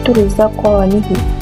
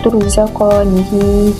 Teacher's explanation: Ibn Wirdan akan membaca dengan ha berbaris bawah tanpa silah, iaitu turzaqanihi. Manakala Ibn Jammas akan membaca dengan ha silah, iaitu turzaqanihi.